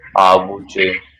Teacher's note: noi ci mettiamo in mezzo questo suono V, Avuci, forse per non farlo dittongare, sì. per non farlo diventare otri praticamente.